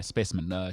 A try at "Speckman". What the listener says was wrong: And also, that's not how you say it. It's Speckman. Speckman.